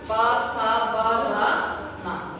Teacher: प वर्ग ओठ है, दोनों ओठ क्या हो रहा है? स्पर्श हो रहा है।